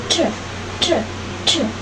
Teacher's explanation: terdapat aliran udara yang kuat keluar dari rongga mulut sehingga menghasilkan bunyi aspirasi.